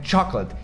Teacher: Primeiro é esse som de chocolate, esse porque o CH em português, tipo chão, cachorro, esse som de X, só que no inglês o CH tem som de tipo tchau, então é chocolate. E a sílaba mais forte é a primeira